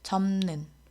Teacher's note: 비읍이 니은 앞에서 미음으로 바뀌었죠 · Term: 비음화